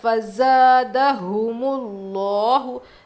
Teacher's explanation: لفظ اللہ کے لام سے پہلے پیش موٹا پڑھیں گے